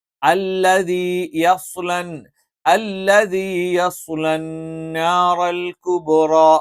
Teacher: ല നാവിന്റെ അറ്റത്തോട് ചേർന്ന് കിടക്കുന്ന വശം, അതിനെതിരെയുള്ള പല്ലുകളുടെ മോണയോട് ചേർത്ത് വെച്ചുകൊണ്ടാണ് ല ഉച്ചരിക്കുന്നത്.